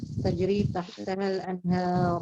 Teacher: Khusus di tempat ini tidak dibaca tahtiha, akan tetapi dibaca tahtaha, yakni tak kedua berharokat fathah.